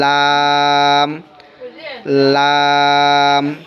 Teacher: জিহ্বার আগার কিনারা আর আপনার উপরের দাঁতের ওই মারি বা গোড়া বলেন সেখানে লাগাইয়া লাম লাম এরকমের।